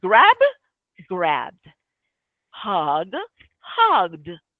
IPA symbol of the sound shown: d